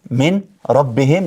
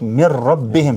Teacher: për shembull min rabbihim lexohet mir rabbihim shkrihet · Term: idgham bila ghunne